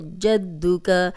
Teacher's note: اب دال پہ شد ہے تو شد والا حرف 2 بار پڑھا جاتا ہے